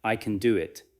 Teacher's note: The stress moves to can because you are correcting the other person.